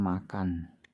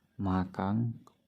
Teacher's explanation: dalam masyarakat Bugis, pengucapan bunyi setiap kata yang diakhiri bunyi N akan mengalami perubahan bunyi menjadi bunyi NG. Contohnya pada kata makan, yang sering dilafalkan makang oleh masyarakat Bugis.